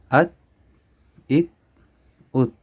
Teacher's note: اب کیونکہ یہ آگے والا قلقلہ میں نہیں آتا حروف قلقلہ میں، تو اس کو ہم بغیر قلقلہ کے حرکت کیے بغیر پڑھیں گے